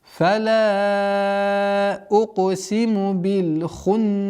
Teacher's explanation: Удержание назализации в размере двух огласовок. При остановке аннулируется кесра и уходит сукун.